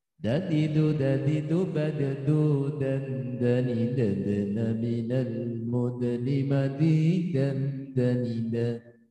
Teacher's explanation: Dal, to, ta, ini satu kelompok masuk kategori ujung lidah bertemu pangkal gigi seri atas